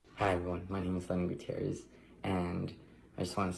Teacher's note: You're going to get a little vocal fry here and a little soft-spokenness.